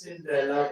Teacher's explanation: Cinderella with a stress on the third syllable